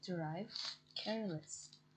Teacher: Because suffix less is unstressed and does not attract stress. The base syllable stays stressed.